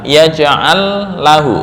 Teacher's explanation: Ini nggak boleh dengung. Kenapa? Lam bukan termasuk huruf gunnah.